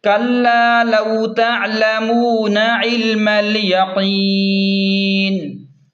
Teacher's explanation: وقف کی صورت میں نون کو ساکن کریں گے، وقف کی صورت میں نون کو ساکن کریں گے اور مد بھی کریں گے مد عارض کی وجہ سے